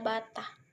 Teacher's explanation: bunyi rendah, yaitu bunyi yang dihasilkan dengan cara posisi lidah merendah sehingga menjauh dari langit-langit keras. Caranya itu, rahang bawah diturunkan sejauh-jauhnya dari rahang atas, misalnya A pada bata.